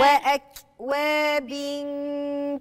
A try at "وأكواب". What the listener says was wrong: لا أنا كده مش سامعة الكاف خالص.